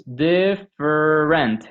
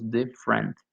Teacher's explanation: Notice that the middle vowel is eliminated.